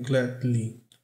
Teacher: Ele não pronuncia o D, mas ele faz uma paradinha.